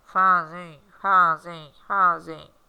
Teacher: parece que o som não sai perfeitamente parece que o som fica preso ali no nariz né parece que a gente está fanho na verdade né assim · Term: ditongo nasal